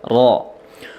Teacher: kemudian ro-nya di situ tafhim, tebal ya